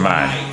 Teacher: is articulated in front part of the vocal tract with the tongue half open and the lips in spread position